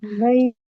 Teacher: ini ha di pangkal tenggorokan